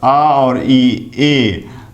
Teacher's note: ए का उच्चारण कंठ तालव्य, कंठ से और तालु से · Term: कंठ्य तालव्य